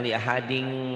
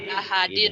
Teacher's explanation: Li ahadinnya min idhar, jangan li ahading.